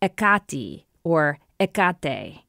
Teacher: The first vowel is aspirated, giving it a kind of H sound. Stress is on the second to last syllable. And the ending vowel actually depends, and here he says, on the declension of the name, so the nominative form is different than the genitive.